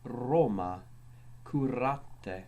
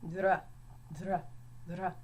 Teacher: R was always trilled, hence it was called the littera canina, because it sounds as if you're growling, such as in the word Roma, curate.